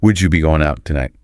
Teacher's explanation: so warm so musical very sing songy yeah with that intonation that goes up and down